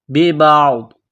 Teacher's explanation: جب یہاں پر سٹاپ کریں گے، وقف کریں گے تو ضاد کو سائلنٹ کریں گے